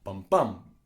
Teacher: Iambic pentameter simply means that the iamb, which is a 2-syllable poetic rhythm of an unstressed, stressed syllable, bum bum, is repeated 5 times.